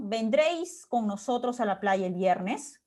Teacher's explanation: la entonación es ascendente al final · Dado que no hay la presencia de un pronombre interrogativo al inicio, el tonema tiene que ser ascendente, de todas maneras, al final